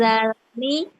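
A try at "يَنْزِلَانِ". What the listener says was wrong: Kok za? Zi.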